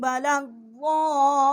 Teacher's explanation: بڑی مد ہے 4 الف جتنا، یہاں ہم نے آواز بلند کی ہے، اور ضاد جو ہے اس کو ہم نے لام کے ساتھ مشدد کیا ہے۔